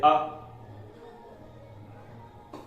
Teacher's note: इसके बाद तीसरा है उदासीन, जिसमें पता ही न चले कि होठों की आकृति वृत्ताकार है या अवृत्ताकार है, जैसे अ। तो इसमें होठ उदासीन रहते हैं, ध्वनि कंठ से निकलती है और सीधा मुंह से प्रवाहित हो जाती है, तो इसमें होठों का ज्यादा काम नहीं होता, इसलिए ये हो जाएंगे उदासीन, मतलब छोटा आ हो जाएगा उदासीन।